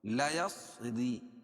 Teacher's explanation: را باریک ہوگی کیونکہ را کے نیچے زیر ہے